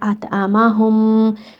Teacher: اور میم مشدد یعنی میم کے اوپر شدہ ہے، تو جب بھی میم کے اوپر یہ حرکت ہو تو آپ نے میم کو غنہ کے ساتھ ادا کرنا ہے، اطعمہم یہاں غنہ کرنا ہے۔